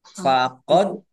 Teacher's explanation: Dal sukun bacaan kolkolah dibaca memantul, ditampakkan pantulannya.